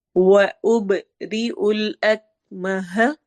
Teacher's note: با پہ قلقلہ ہوگا، ایکو ساؤنڈ ہوگی